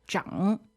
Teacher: this zhang is third tone, right? >> Dui, di san sheng, zhang.